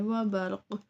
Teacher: قاف کی آواز پلٹ کے آئے گی، قلقلہ ہے کیونکہ حروف قلقلہ ساکن ہو تو ان کی آواز پلٹ کے